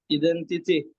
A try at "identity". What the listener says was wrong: I itu bukan I.